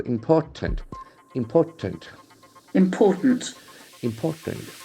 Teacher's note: The accent falls on the second syllable.